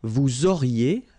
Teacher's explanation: liaison here, and then EZ will go like E